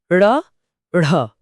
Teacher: इन्हें बोलते समय जीभ पहले पीछे मुड़कर तालू को छूती है और फिर झटके से नीचे गिरती है, जैसे किसी ने कोई भारी चीज नीचे फेंक दी हो। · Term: उच्छिप्त व्यंजन